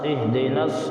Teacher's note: دیکھیے اہدنا الصراط المستقیم میں اس نون کے بعد جو الف ہے اس کو نہیں پڑھیں گے بلکہ اس نون کو ڈائریکٹ اس صاد میں ملائیں گے اور نون صاد زبر نس، اہدنس اس طرح پڑھیں گے۔